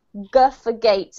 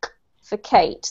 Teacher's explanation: when you're saying the sound, G, you have to use your vocal cords. You actually have to make a sound with your voice as well as your mouth, right? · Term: voiced